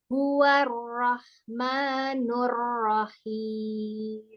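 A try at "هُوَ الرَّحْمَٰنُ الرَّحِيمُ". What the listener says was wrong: Iya, ra-nya jangan ro. Coba fathah mimnya nggak jangan ditarik. Rahangnya aja yang dibuka. Bibirnya jangan ditarik ke belakang.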